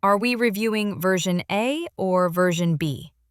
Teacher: Small rise on B.